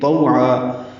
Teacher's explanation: تو واو لین ہے، ہونٹوں کو نا تمام گول کریں گے۔